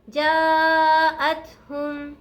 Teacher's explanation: جیم کو مد کی وجہ سے لمبا کھینچیں گے